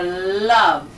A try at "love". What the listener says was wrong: Oh, get that tongue out.